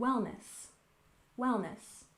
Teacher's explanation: we stress the first syllable in Wellness